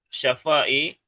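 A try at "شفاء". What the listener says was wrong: Syifai. Syafa apa syafa? Tidak ada. Syifa. Syifa, syifai.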